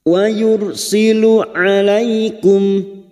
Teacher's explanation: alaikum fathah bertemu ya sukun kita lunakkan. Alai sama halnya bertemu dengan huruf abjad i, alai.